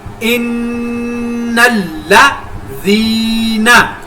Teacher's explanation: نون کے اوپر شد کی وجہ سے غنہ کیا لازمی اور نون کے اوپر شد آگے لام کے اوپر شد دونوں کے اوپر سختی کے ساتھ ملایا اور یہاں پر یا مدہ کو ایک الف کے برابر لمبا کر کے پڑھا کیونکہ یا ساکنہ سے پہلے زال کے نیچے زیر ہے.